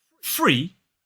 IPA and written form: friː (Free)